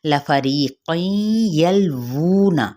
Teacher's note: فا ہمس والا لیٹر ہے، اس کی حرکت کو بھی لمبا نہیں کریں گے